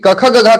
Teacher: क ख ग का लेटर जो बोला जाता है यह कहीं कहीं कंठ से निकलता है · मतलब कि क का उच्चारण स्थान कंठ, ख का उच्चारण स्थान कंठ, ग का उच्चारण स्थान कंठ, यानी कि क ख ग घ का लेटर जो बोला जाता है ये कहीं ना कहीं कंठ से निकलता है, इसलिए कंठ स्वर इसको बोल रहे हैं।